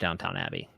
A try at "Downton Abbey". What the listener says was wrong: It's D-O-W-N. No, it's T-O-N at the end.